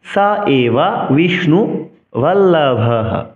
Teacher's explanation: বিসর্গের জন্য হ উচ্চারণ করব, কিন্তু সংস্কৃত শ্লোক উচ্চারণে বিসর্গ অক্ষর হিসেবে গণনা হবে না, কিন্তু উচ্চারণ করব।